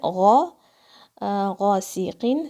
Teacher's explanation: غین کی آواز حلق کے اوپر کی طرف سے آتی ہے